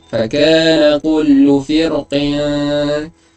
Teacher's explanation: bacaan nipis lebih baik. Tebal pun boleh, fir pun boleh, tapi nipis lebih baik. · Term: tarqiq aula